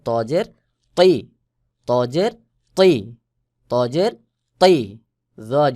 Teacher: ত জের তৈ তা এবং ত এই দুইটার ক্ষেত্রেও একই এরকম তর আওয়াজ মোটা করে শক্ত করে গোলমত হয়ে উচ্চারণ হয় আর তা স্বাভাবিকভাবে উচ্চারণ হয় যেমন ত জের তৈ ত জের